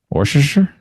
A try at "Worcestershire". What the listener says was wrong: We just pronounced it Worcester. We don't pronounce most of the letters in it. Just Worcester. Worcester sauce.